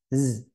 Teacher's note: Za hembus enggak saudaranya? Enggak. Kan tapi desis.